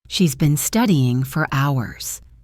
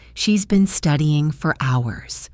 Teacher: Here, for is unstressed, so it becomes fur. And notice the stress is on the first syllable of studying. The rhythm is like da-da-da.